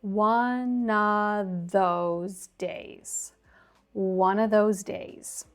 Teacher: we can link the ending of one to the beginning of of because it starts with a vowel. And then we can drop the vv sound at the end of of as we often do in rapid speech to link with the next word. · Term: linked together